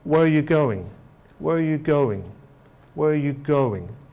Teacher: the pitch is downwards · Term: falling tones